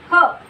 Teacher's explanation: ह या वर्णाचा उच्चार करताना फुफुसातील हवा तोंडावाटे द्वाराने बाहेर फेकली जाते